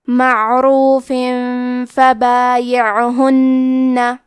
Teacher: کلمت معروف میں را پہ پیش ہے، تو حرف را کا حکم ہے تفخیم، تو ہمیں را کو موٹی آواز میں پڑھنا ہے · فا حروف الاخفاء میں سے ہے، اخفاء کا معنی ہے چھپا دینا، تو ہم تنوین کو چھپاتے ہوئے اور غنہ کے ساتھ یہ حکم کو ادا کریں گے